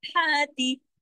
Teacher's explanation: ہاں کے اوپر کھڑی زبر ہے، اس کو گلے سے بھی پڑھنا ہے اور الف کی طرح کھینچ کر بھی پڑھنا ہے